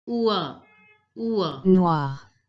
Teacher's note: Notice the OI sound. OI is pronounced as oua.